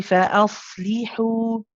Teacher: Here we have the sad. The sad is a rakhawa letter. It's one of the letters that you have to stay on. Okay, it's longer than the lam, for example.